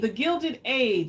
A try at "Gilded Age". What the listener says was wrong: Not Edge, Age. I might have said it wrong, but Gilded Age.